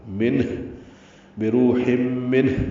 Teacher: ہا وسط الگ سے ادا کریں گے، تنوین کے بعد میم آنے کی وجہ سے ادغام ہوگا، یہ غنہ بھی ہے. بروح منہ نون ساکن کے بعد ہا ہے، ہا بھی ساکن ہو گیا وقفاً اور اس پہ اظہار ہوگا نون ساکن پہ، اور ہا ساکن پہ ہمس ہوگا